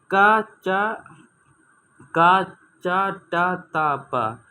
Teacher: का वर्ग को हम कंठ बोलते हैं, चा वर्ग को हम तालव्य बोलते हैं, टा वर्ग को मूर्धन्य बोलते हैं और ता वर्ग को हम दंत बोलते हैं और पा वर्ग को हम ओष्ठ बोलते हैं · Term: कंठ, तालव्य, मूर्धन्य, दंत, ओष्ठ